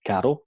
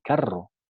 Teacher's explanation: Lo que les diferencia es el grado de vibración de cada uno. La r normal es una vibrante simple y la r es una vibrante múltiple. · la lengua vibra una sola vez, es una vibrante simple, mientras que r se articula mediante una sucesión de vibración, es una vibrante múltiple.